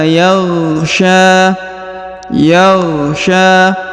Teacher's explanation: huruf Sya dipanjangkan dua harakat karena di atasnya terdapat Alif kecil dan di depannya terdapat alif bengkok atau Alif maksurah Wili yagya